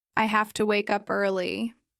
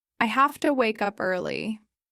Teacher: Function words often reduce. Have to becomes hafta.